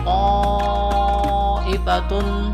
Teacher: baca mad wajib muttasil, panjangnya 5 harokat dalam ilmu tajwid